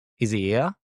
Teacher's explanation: And we drop the h and the he. So it becomes is here.